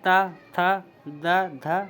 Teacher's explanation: दांतों से होता है जैसे कि त थ द ध ना इसमें हमारी जीभ जो वो दांतों से लगी होती है